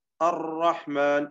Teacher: കൂടുതൽ തക്രീർ വന്നുകൊണ്ടുള്ള കൂടുതൽ റാവ് ഉച്ചരിച്ചുകൊണ്ടുള്ളതും തെറ്റാണ്. രണ്ടിന്റെയും ഇടക്കാണ് ശരി കിടക്കുന്നത്, അതാണ് നമ്മൾ ശ്രദ്ധിക്കേണ്ടത്.